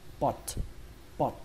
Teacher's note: Nếu như các bạn muốn độ chính xác của nó cao hơn thì các bạn hãy bắn hơi âm T